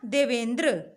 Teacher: अ और ई मिलकर क्या बनाते हैं, ए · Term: गुण संधि